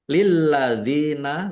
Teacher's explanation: Lilladzina lamnya dibaca double ada tasdidnya ditekan biar tampak doublenya. Lilladzina dal kasroh ya sukun mat tobi'i panjang 2 harokat.